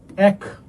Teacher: একযুক্ত শব্দে অথবা 1, 11, 13 এই 3টা শব্দের ক্ষেত্রে কি হয়? এ বিবৃত উচ্চারিত হয়